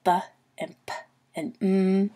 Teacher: those are the sounds that you make with your two lips together so the bump and mmm those sounds are bilabial sounds and